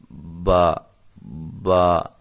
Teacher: دونوں ہونٹوں کی تری والے حصے سے جب یہ ملتے ہیں تو با ادا ہوتا ہے